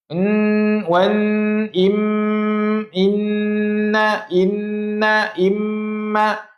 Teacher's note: Dengung tu kat khaisyum. Khaisyum tu kat hidung rasa.